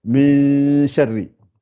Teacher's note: il y a 50% qui sort par le nez et 50% du son qui sort par la bouche. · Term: la dissimulation